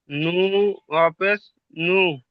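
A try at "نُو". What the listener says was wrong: জি, একটু টান দিয়ে নুন অপেশ নু, একটু টান দিয়ে জোরে, নু নু, ইয়া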